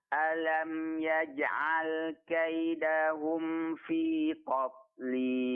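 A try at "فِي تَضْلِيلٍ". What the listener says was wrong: Nah, di sini huruf ta-nya tipis ya, Pak ya. Fi tadlil. Bukan to, tapi ta. Tadlil. Pertama tadi pengucapan huruf ta yang berdekatan dengan huruf dad.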